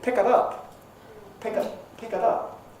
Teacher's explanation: So you sort of expect it to have a weak form. When Australians use it, usually they pronounce it ut, because it's usually weak. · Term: weak vowel